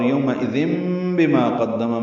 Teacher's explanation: تنوین کے بعد با آنے کی وجہ سے چھوٹی میم لکھ دی گئی ہے، وہی پڑھیں گے، نون کی آواز نہیں نکالیں گے، میم کی آواز نکالیں گے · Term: اقلاب